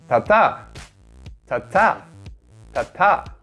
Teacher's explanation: The tensed form of tigit is, of course, sangtigit, and just like the other tensed letters, tigit is always voiceless and is pronounced with a higher pitch